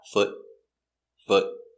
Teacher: it's a stop t so we don't say foot we put our tongue up and stop foot foot one foot remember the sound it's the short foot